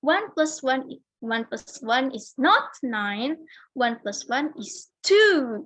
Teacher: Jadi ditekan itu kalau misal di satu sentence yang ditekan cuma satu, kayak not 9 gitu.